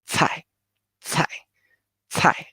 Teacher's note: A lot of air pump out because of the C, right? The C is the TS, strong air.